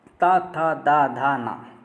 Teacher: आपकी जो जीवा है वो आपकी जो दांतों में एकदम टच कर रही होगी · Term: ता वर्ग